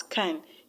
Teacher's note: In a sentence where you have a grammatical word like can, C-A-N, you do not pronounce the A as A. Rather, you pronounce it as a schwa sound, A. That's why you pronounce it as can.